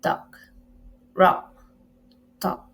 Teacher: produced in the back of the vocal tract with the tongue open and in low in the mouth and in a rounded position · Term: open back